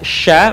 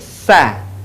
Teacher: Huruf sya keluar dengan menyentuhkan tengah lidah kita dengan langit-langit. Diucapkan, mengalir udaranya, dan mengalir pula nafasnya.